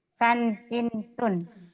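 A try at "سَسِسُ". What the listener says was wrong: Iya kalau ini sasisu dulu bukan sansinsun. Sasisu kan barisnya cuma satu. Kalau barisnya dua jadi sansinsun.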